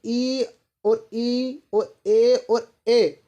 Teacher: ये जो स्वर हैं ये हमारे जीभ के आगे भाग से बोले जाते हैं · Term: अग्रस्वर